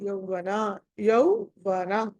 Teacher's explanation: ఔ లో వకారం కొంచెం కనిపిస్తుంది కదా